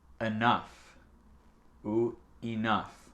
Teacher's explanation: On peut prononcer le E comme A ou I, comme vous voulez.